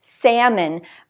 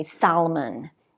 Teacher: it's the same spelling a L we don't pronounce this L